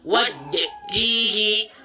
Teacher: pantulannya, eh, memantul tapi tertahan, terputus.